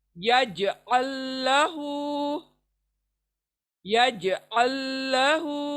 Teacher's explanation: जीम कलकला, तो उसके पर झटका आएगा आपका,